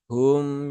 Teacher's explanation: mim ini ya dia sifatnya bukan syiddah ya, tetapi dia sifatnya adalah tawasud ya. Maka tawasud itu dia di pertengahan ya, pertengahan antara syiddah dengan rokhawah. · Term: mim sukun